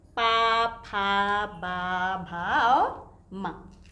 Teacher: इन वर्णों के उच्चारण में हमारे दोनों होठ एक दूसरे से स्पर्श करते हैं, इसीलिए इसे ओष्ठ वर्ण कहलाते हैं।